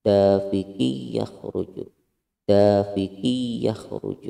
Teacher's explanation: Idgham bi gunnah, tanwin bertemu dengan huruf ya. Jadi dafiqiyya, dafiqi yakhruju, dafiqi yakhruju, seperti itu.